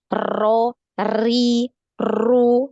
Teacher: ketika mengucapkan huruf ro ini terlalu banyak takrir atau getarannya.